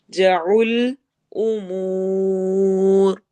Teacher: लंबा करते हुए रॉ को मोटा पढ़ते हुए ही स्टॉप करेंगे